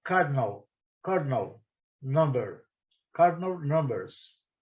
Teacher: A primeira sílaba é a mais forte. E numbers, a primeira sílaba também é a mais forte. · Vocês podem ver na pronúncia que o A ele é praticamente silencioso. Ele, inclusive, na grafia fonética, ele nem aparece.